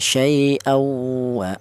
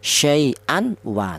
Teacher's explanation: Cara bacanya tanwin ini langsung atau melebur ya. Tanwin ini langsung menyatu ke huruf wawu, ini cara bacanya ya, syai'awa, seperti itu. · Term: idgham bi gunnah